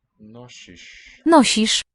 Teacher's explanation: The final one here, sh is retroflex.